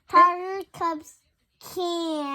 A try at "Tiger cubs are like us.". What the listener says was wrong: Are. Tiger cubs are. Do you see how it doesn't start with a C? That has an A, not a K. Tiger cubs are.